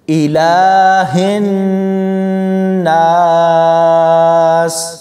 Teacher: نون کے اوپر شد ہے تو جیسے ہی ہم ہا کو نون کے ساتھ ملائیں گے تو اس پر غنہ ہوگا